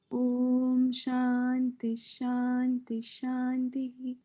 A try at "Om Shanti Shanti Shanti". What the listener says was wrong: they're little more relaxed at the Om Shanti Shanti Shanti. Okay. The rest of it came well, but somehow you sped up there.